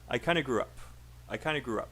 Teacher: grew up is not they're not both stressed gru is stressed up will probably be very small and unstressed